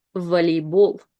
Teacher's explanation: first O is unstressed, so we read it as A